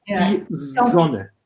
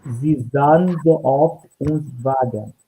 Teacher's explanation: Sie sahen, you have two times, not s, with voice, yeah? Sie sahen so, three times, yeah?